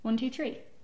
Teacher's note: Some of us actually are saying the TH, but we're saying it so quickly and lightly that you can barely hear it